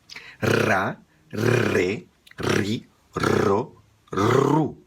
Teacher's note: da boca sem tocar e perto dos dentes de cima e quando você soltar o ar com pressão a língua vai tremer tocando no céu da boca tá R E aí você acrescenta a vogal que você quiser